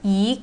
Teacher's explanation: so e need to change to the second tone